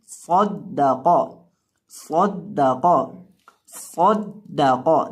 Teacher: सौद को हमने दाल के साथ मिलाकर पढ़ना है और दाल के ऊपर जबर पढ़नी है, और सौद को हमने मोटा करके पढ़ना है और दाल को बारीक पढ़ना है, और कौफ को भी मोटा करके पढ़ना है।